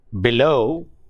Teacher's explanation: the stress is on the second syllable, that is not on be but low